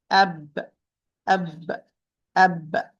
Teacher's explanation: There is no running of a lot of air, so it's حرف مجهور. It's a voiced letter